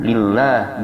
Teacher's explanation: jika sebelumnya kasrah maka dibaca tipis dengan a